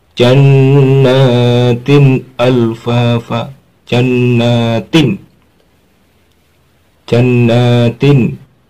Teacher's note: Harus dibaca jelas suara n-nya tanpa dengung. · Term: idhar halqi